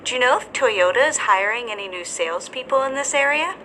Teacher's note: our intonation rises at the end of this yes or no question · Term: rising intonation